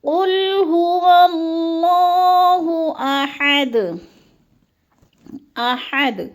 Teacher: ہا کو ہم نے حلق کے درمیانے حصے سے نکالنا ہے کیونکہ حروف حلقی والا یہ ہا ہے